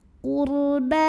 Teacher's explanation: Huruf ra dibunyikan secara tafkhim karena ra sukun didahului baris dhammah, maka bacanya tebal.